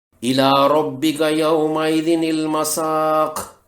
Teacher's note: مثلا الی ربک یومئذ المساق، اس میں قاف کے اوپر پیش ہے، وقف کرنے پر قاف کی پیش جزم میں بدل جائے گی، مساق پڑھیں گے، الی ربک یومئذ المساق۔ قاف جو حروف قلقلہ میں سے ہے اور اب یہ ساکن میں تبدیل ہو گیا ہے، تو اس پر قلقلہ بھی ہوگا، قلقلہ کبیرہ، کیونکہ اسی قلقلہ والے حرف پر وقف ہو رہا ہے۔